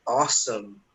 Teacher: you have this aw sound so it's not ow